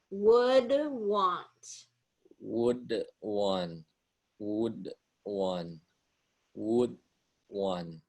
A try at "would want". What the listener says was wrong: Yeah, you're swallowing it a little bit, and that T at the end here of want, I'm not hearing as well. Would want, would want. And yeah, if you want to put a duh in there, would.